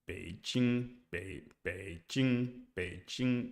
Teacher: when tone three comes before another syllable, the rise is completely lost. · Some people analyze tone three as being simply low with the dip and rise only appearing when convenient. You can think of Beijing Beijing as being pronounced low high.